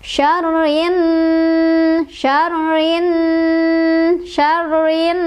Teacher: Dibacanya gunnah itu berdengung. Ditahan dengungannya 2, 3 atau 4 ya. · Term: hukum gunnah